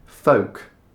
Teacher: Even English people get this one confused because when you see it written down, you're wondering what the L is doing there. So you start to think, should I be pronouncing this L? The L letter? No need, just leave it out.